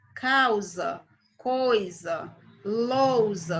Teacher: AU é um ditongo, logo em seguida veio o S com pronúncia de Z.